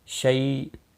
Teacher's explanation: خی یا مدہ ہے، 1 الف کے برابر کھینچ کر پڑھیں گے، ہی کو کھینچنا نہیں۔ شی یا لین ہے، تھوڑا نرمی کے ساتھ کھینچ کر ادا کریں گے